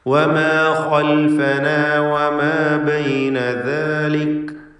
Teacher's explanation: മദ്ദുസ്സിലത്തി സുഗ്റ നൽകിക്കൊണ്ട് ലഹു മാ ബൈന ഐദീന വമാ ഖൽഫന. ഖാ ഇസ്തിഅലാഇൻ്റെ ഹർഫാണ്, തഫ്ഖീം ചെയ്ത് തടിപ്പിച്ച് ഖാഇനെ ഉച്ചരിക്കണം.